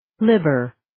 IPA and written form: ˈli-bər (Libber)